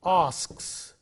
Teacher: When we say asks, it is s sound. He asks, because k is a voiceless sound, the s also is voiceless.